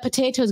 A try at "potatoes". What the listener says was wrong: Enunciate the T. Enunciate.